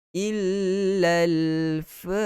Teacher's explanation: Ada syaddah kena tekan, masukkan dalam lam yang pertama.